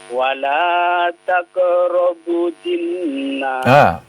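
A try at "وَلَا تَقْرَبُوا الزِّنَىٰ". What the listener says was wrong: Tidak ada tasdid pada nun. Ulangi.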